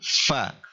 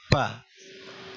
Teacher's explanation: Mulut tidak ditutup rapat, tetapi gigi atas dia itu bertemu dengan bibir bagian bawah. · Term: huruf fa